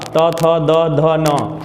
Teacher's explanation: आपकी जिह्वा दंत को टच करेगी, यानी दांत को स्पर्श करेगी। आपको मैं एक और बात बता दूं, कोई बुजुर्ग व्यक्ति होता है उसके आगे के दांत टूटे हुए रहते हैं, या कोई बच्चा है उसके आगे के 4 दांत टूटे हुए हैं या 2, तो वह ये पांचों वर्ण का उच्चारण नहीं करेगा, तोतला बोलने लग जाएगा।